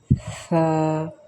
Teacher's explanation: اسے پڑھتے وقت زبان کی نوک کو اوپر دانتوں کے اندرونی کنارے سے ملا کے ہلکا سا چھوڑیں گے اور آواز آئے گی ثا. سیٹی کی آواز یا سین کی آواز بالکل نہیں آئے گی.